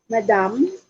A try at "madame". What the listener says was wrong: That is kind of close actually. You're going to actually pronounce it as madame with an E. Okay, so instead of A beside the D, so that would be E, madame.